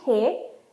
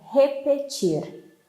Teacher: Please pay attention that we have R sound like H at the beginning, re, and like R at the end, repetir.